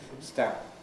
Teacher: Vocal folds stop pretty much at the moment when the velum makes contact. This changes the aerodynamics, and so the backwash stops the vocal folds vibrating.